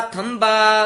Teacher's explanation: ਥੰਬਾ ਭਬੇ ਨਾਲ ਉਚਾਰਨ ਕਰਨਾ ਥੰਬਾ ਬਬਾ ਨਹੀਂ ਬੋਲਣਾ